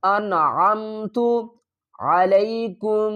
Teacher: یہاں پر اظہار کریں گے، نون کی آواز کو ظاہر کر کے پڑھیں گے۔